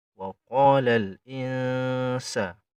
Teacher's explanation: Langsung disamarkan ke huruf sin. Jadi seakan-akan lidah kita menggantung antara nun dan sin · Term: ikhfa